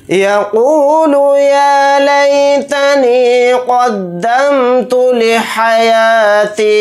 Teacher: क़ाफ़ को यहाँ पर मोटा यानी पुर पढ़ेंगे, यहाँ पर भी क़ाफ़ को मोटा यानी पुर पढ़ेंगे।